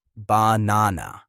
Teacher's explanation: in the word banana, the middle syllable is the strongest, banana. If you say banana or banana, it sounds wrong. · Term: word stress